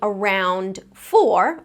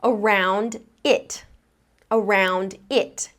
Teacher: I'm not going to skip over that final d sound. I'm actually going to connect it to the beginning of the next word.